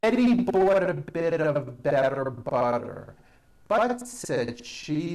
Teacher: you do not hear any T sounds they're only D's which are voiced · all the t's are pronounced as D's because they fall between vowels